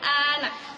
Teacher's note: Yang ketiga yaitu vokal yang netral, yaitu vokal yang diucapkan dengan bentuk mulut tidak bundar dan tidak melebar